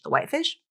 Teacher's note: It follows the yes-no question pattern, the whitefish, with an ending with upward intonation